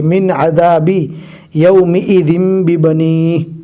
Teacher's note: یہاں پر جزم والے نون کے بعد اظہار کے 6 حروف میں سے عین آیا ہے، لہٰذا یہاں پر جزم والے نون کو ظاہر کر کے اور کلین پڑھیں گے